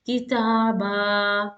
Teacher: you're coming to pause on this word with fathatain and a long vowel alif, you will pause on the long vowel with two counts